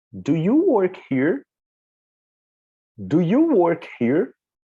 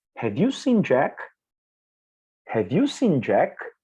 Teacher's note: as they are yes no questions the intonation needs to be rising so the intonation of your voice is different you have to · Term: rising intonation